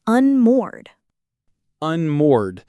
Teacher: The ed at the end just becomes a D sound. Right, in English, when a verb ends in a vowel sound before the ed, the ending is just a clean D, unmoored.